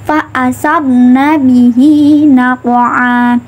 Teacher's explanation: Karena apa tadi ya, dengan cara memantulkan subha fa asabna bihi naqwa. Nah, pada lafal qaf ini ya yang berharokat sukun terletak di tengah kalimat dibaca qalqalah sughra dengan memantulkan secara ringan